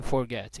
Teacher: Então o final dele é forte, é tônico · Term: stressed syllable